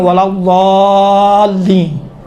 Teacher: دال اور ضاد میں فرق ہے، دال تھوڑا سا باریک ہے، ضاد اسی دال کو تھوڑا غلیظ بناؤ، موٹا بناؤ تو ضاد بن جاتا ہے۔ نوک زبان، کنارہ زبان یا سیدھے سائڈ پہ یا دسترات یا چپ یا سیدھے سائڈ پہ یا الٹے سائڈ پہ لگتا ہے زبان کا سیرا، دیکھیں یہ زبان ہے، یہ زبان یا اس طرح کے داڑھوں سے لگتا ہے یا اس طرح کے داڑھوں سے لگتا ہے۔